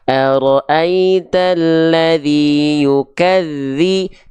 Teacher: Ketika ditekan huruf dzal, mengalir suaranya